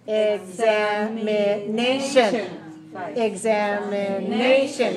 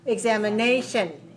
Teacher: 5 syllables. Stress the fourth. 5-4. Examination.